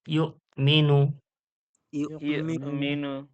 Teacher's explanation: এই ইউটা ঝটকা হবে যেহেতু হামজার উপরে কি আছে সাকিন আছে হামজার উপরে সাকিন আসলে হামজাটা ঝটকা করে পড়তে হয়